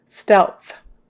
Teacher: isn't it w stealth um so actually what happens is that your L is going to be produced lower probably in the middle so that you can then get the th